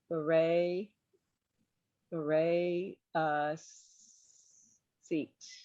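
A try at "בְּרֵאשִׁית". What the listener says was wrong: Sheet. So that's a shin. It is beret.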